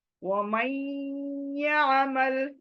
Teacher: وَمَن اگین ادغام، ما سے یا پر جمپنگ، نون ناک میں جائے گی، ادغام ود گننا. وَمَن يَعْمَلْ، عین کو نرمی سے لینا ہے حلق میں. وَمَن يَعْمَلْ، یا عمل نہیں، یا الف زبر یا نہیں، یا عین زبر تو یا عین حلق میں.